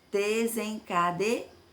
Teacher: Qual é a sílaba tônica? A última, ar.